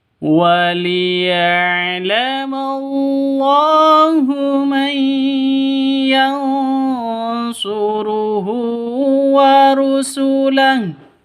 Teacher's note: Nun mati bertemu dengan shad, samar didengungkan, siap-siap ke huruf shadnya, ikhfa hakiki